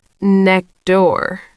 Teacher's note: The T in next disappears. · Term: deletion or elision